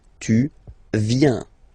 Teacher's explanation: Tu viens. Final S not pronounced.